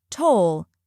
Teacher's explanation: First, we have toll, which rhymes with goal and roll. It's a single, strong syllable with a long O sound.